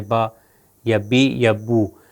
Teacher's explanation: یہ با جو ادا ہم کر رہے ہیں یہ دونوں ہونٹوں کو آپس میں لگا رہے ہیں، با با، ہونٹوں کو لگائے بغیر اس کا ادا نہیں ہو سکتا، بالکل ہماری جیسے اردو یا دوسری لینگویجز یا دوسری زبانوں میں جیسا ہے۔ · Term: بے